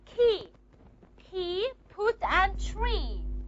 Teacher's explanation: Voiceless stops are P, T, and C. All of these three sounds are aspirated in word initial position. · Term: aspiration